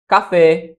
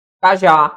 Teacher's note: Se pó terminado em o, né, ó, sílaba tônica é a última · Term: oxítona